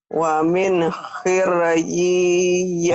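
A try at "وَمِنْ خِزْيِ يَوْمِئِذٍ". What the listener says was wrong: Bukan hir, tapi itu ada titiknya jadi zai ya. Hizyi.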